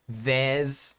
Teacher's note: i'm combining there and is together a good kind of feature of english pronunciation